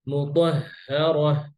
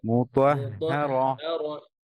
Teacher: মুতাহহারা যেন গোল না হয়ে যায়